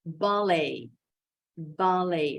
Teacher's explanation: Nah, ternyata ini stressingnya ada di suku kata kedua. Lihat, tanda koma di atasnya nih ada di suku kata kedua.